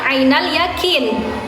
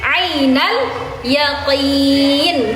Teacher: Bukan ainal yakin, tapi ainal yaqin. Di pangkal tenggorokan sedikit ke belakang.